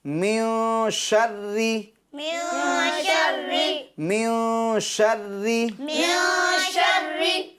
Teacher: نون ساکن کے بعد یا پھر تنوین کے بعد، تو وہاں پر اخفا ہوگا، یعنی گننا کر کے پڑھیں گے. یعنی اس نون کی یا تنوین کے نون کی آواز ناک میں لے جائیں گے